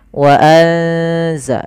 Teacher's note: Suara nunnya disamarkan ke zai wa anza sambil ditahan bacaan ng-nya atau bacaan ghunah ik ya dengungannya. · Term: ikhfa